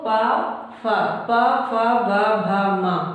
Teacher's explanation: दोनों जो लिप ओठ हैं वो एक दूसरे को टच कर रहे हैं, तो यहाँ पे क्या हो जाएगा, ये वोष्ठ हो जाएगा, ओष्ठ, यहाँ पे ये वोष्ठ हो जाएगा।